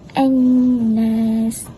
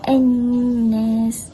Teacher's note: Nun tu kita baca dengung 2 harakat. Suara daripada hidung. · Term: nun bersabdu